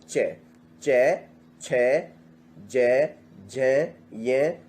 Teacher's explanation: ये सब तालु से निकल रहा है आवाज, तो इनका उच्चारण स्थान तालु होगा।